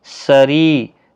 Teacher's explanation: سری ری یا مدہ ہے، سین حروف صفیریہ کا حرف ہے، اور زیر کی وجہ سے باریک بھی پڑھا جائے گا، یا مدہ بھی ہے، ایک الف کی مقدار کے برابر کھینچ کر بھی پڑھا جائے گا۔